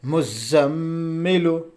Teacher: میم کے اوپر تشدید ہے تو یہ غنہ بھی ہوگا